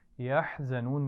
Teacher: یحزنون میں حا اور زا ان دونوں کا خیال رکھیے. حا کو گلے کے درمیان سے ادا کرنا ہے